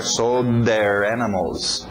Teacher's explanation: O D entrando no TH de there.